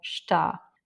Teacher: Donc on a déjà vu ce mot plusieurs fois et effectivement le A a un accent, il est tonique, donc le E lui est moins important dans le mot, donc on va le couper et on dit simplement está. Mais aussi, vous l'entendrez beaucoup au Portugal, ta tout seul.